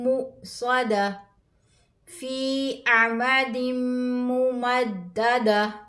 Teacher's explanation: گول تا کو ہا میں بدل کر پڑھیں گے